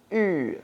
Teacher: U is the same thing as E, except your lips are rounded. So just pucker them like it's a kiss.